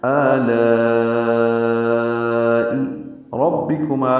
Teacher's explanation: را کی زبر کی وجہ سے را کو پر پڑھ رہے ہیں ، با کو معروف طریقے سے جلدی پڑھیں گے، ربی ربے